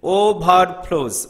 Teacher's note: then overflows, over, unaccented, flows, accented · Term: accent or stress